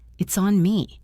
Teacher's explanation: Listen to the stress. It is usually on the word on.